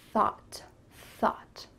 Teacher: I often hear English learners switching an S and a TH sound, sought instead of thought.